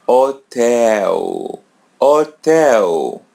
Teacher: Letter L comes in the end. So pronounce it as W.